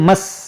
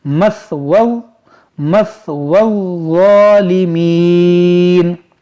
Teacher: مس، سین سے پڑھتے ہیں، تو سین سے آپ کو نہیں پڑھنا ہے، ثا سے پڑھنا ہے، نرمی سے۔ مثوو الظالمین، وا کو پڑھیں گے نرمی سے۔